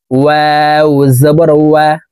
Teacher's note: ওয়াও হরফের উচ্চারণ দুই ঠোঁট গোল করে দুই ঠোঁটের মাঝে ফাঁকা রেখে উচ্চারণ করে পড়তে হবে।